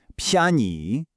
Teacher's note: It combines a rising second tone on pen with a neutral tone on yei.